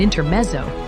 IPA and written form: ɪntəˈmɛtsəʊ (INTERMEZZO)